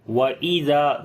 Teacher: ذال کو نرم پڑھیں گے، لمبا کریں گے، الف مدہ ہے